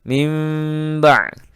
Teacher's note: bibirnya tidak terlalu rapat sehingga dengung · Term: iqlab